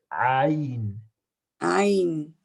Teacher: it really comes from the middle of the throat